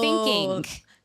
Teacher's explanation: when I say a word that ends with ing, I put a k